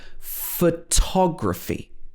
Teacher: in photography the first o is a schwa